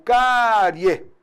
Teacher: a gente tem uma semivogal e na sequência o som cresce para vogal